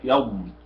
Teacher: الخطأ الشائع هنا عند قول يض قلقلة الضاد، لا أقول يض بالاستطالة والإطلاق